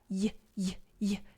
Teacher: It is a consonant when it makes a y, y, y sound, because I'm actually partially blocking the air when I say y, y, y.